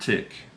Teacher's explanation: the word tick has a T that is on the tip of your tongue, starting consonant sound, the T, and then you end with the K